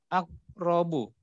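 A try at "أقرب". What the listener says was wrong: Selalu fathah. Akroba.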